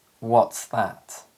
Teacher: the t sound is produced by blocking and releasing air between the tongue and the ridge of the mouth · the t and s sounds are produced in a similar part of the mouth, and the s and th sounds are produced in a similar way, so we can't blend these consonants easily.